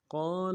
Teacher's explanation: قاف کو موٹا کرنا ہے، قاف کے بعد الف مدہ ہے، ایک الف دال میں کھینچیں گے